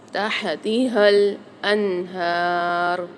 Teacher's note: جو دو چشمی والی ہا گول ہا ہے اس کو ہم بھاری آواز کے ساتھ پڑھیں گے، ہلکی سینے میں وائبریشن ہوگی، ہم اس کی ادائیگی کرتے ہیں اور یہ منہ کے خالی حصے سے ادا ہوتی ہے۔